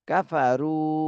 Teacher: রুতে এক আলিফ টান দিতে হবে, পেশের বামে জজমালা ওয়াও মদের হরফ।